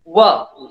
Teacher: આ અર્ધ સ્વર છે, વ. વ જો ગોળાકાર છે, બંને હોઠ થી બોલાય છે એટલે દ્વયોષ્ટ્ય છે